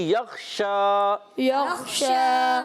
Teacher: شین پر کھڑا زبر ایک الف کھینچ کر ادا کریں گے. شین کی ادائیگی ہوتے ہیں زبان کے درمیان، اوپر تالو کے درمیان سے، ٹھیک ہے؟ · خا کو پر رکھنا ہے، پر حروف میں سے، حروف مستعلیہ میں سے. شین پر کھڑا زبر ایک الف کھینچ کر ادا کریں گے.